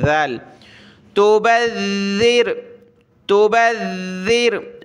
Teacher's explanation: کا تلفظ ادا ہوگا، تبذر، اس کو سخت نہیں کرنا، یعنی سخت تو کرنا ہے تشدید کی وجہ سے لیکن اس ذال کو زا نہیں بنا دینا ، زا نہیں پڑھنا، تبذر تو لفظی چینج ہو جائے گا،